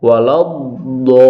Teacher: ada sifat istitolah, suara dod sedikit dipanjangkan.